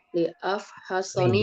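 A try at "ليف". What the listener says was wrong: Liyaf. Bukan li'a. Liyaf.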